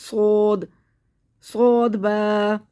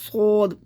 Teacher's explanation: صوت میں کیا ہوگا کہ آواز منہ بھر کے نکلی ہماری، صود منہ بھر کے نکالنی سیٹی کے ساتھ